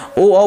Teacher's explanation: ओ का उच्चारण कंठ और होठ से होगा · ओ बोलेंगे तो होठ भी आपका हरकत करेगा और कंठ तो बोल ही रहा है। तो कंठ और होठ के दोनों के जुड़ने से ओ औ का उच्चारण होगा। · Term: कंठोष्ठः